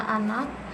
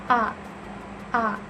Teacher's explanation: dilafalkan dengan mulut terbuka lebar dan lidah rendah.